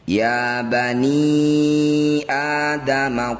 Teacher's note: disebut bacaan Mad Jaiz munfasil cara bacanya ni yang bertanda layar panjangkan lima harakat atau lima ketukan